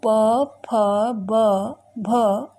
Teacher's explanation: Fifth है ओष्ठ। दोनों ओठों की सहायता से छोटा ऊ, बड़ा ऊ, प, फ, ब, भ ये वर्ण बोले जाते हैं।